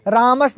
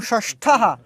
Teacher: रामस में जो सा है ना वो दंती शा है, और षष्ठा में जो शा है वो मूर्धन्य शा है